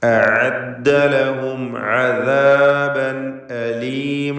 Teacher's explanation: ലഹും എന്നതിൽ ഇൽഹാർ ഷഫവിയാണ്, മീമിന് നൽകേണ്ടത് മണിക്കാതെ വെളിവാക്കണം. അദാബൻ എന്ന തൻവീനിനെ ഇൽഹാർ ഹൽക്കിയാണ് നൽകി ഉച്ചരിക്കേണ്ടത്, മണിക്കാതെ വെളിവാക്കി ഉച്ചരിക്കുക.